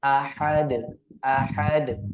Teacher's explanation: makhrajnya terletak pada tenggorokan bagian tengah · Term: huruf ha